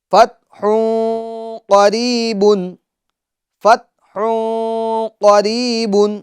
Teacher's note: غنہ کہتے ہیں ناک میں آواز لے جانے کو، اور غنے کی مقدار ایک الف کی ہے۔